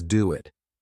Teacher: we kind of have this extra letter W between the two words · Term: intrusion